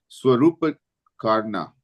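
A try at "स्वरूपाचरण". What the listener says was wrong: Swarupacharan. actually, this A needs the line. It's PA, that A should have the line because it's Swarupacharan.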